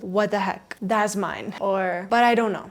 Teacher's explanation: what, that, and but when followed by other words often lose the T sound